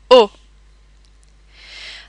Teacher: notice that the o sound in french is very rounded and clipped